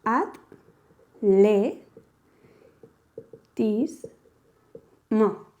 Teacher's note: la T la pronunciamos junto con la A, mientras que la L la pronunciamos junto con la E. Por lo tanto, el conjunto de T y L lo tenemos que separar, ya que inconscientemente para poderlo pronunciar bien y adecuadamente tenemos que separarlo.